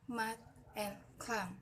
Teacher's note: Nah, konsonan nasal itu dalam bahasa Inggris itu yaitu pertama contoh mat and clam. Itu saluran oral diblokir dengan menutup bibir atau yang disebut dengan bilabial.